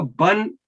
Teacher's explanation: با دو فتح کے ساتھ, تو اس کو بن پڑھیں گے, اس کو بان نہیں کہہ سکتے کیونکہ با کو لمبا ہم اس وقت کریں گے جب الف اس کے ساتھ اٹیچ ہو. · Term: تنوین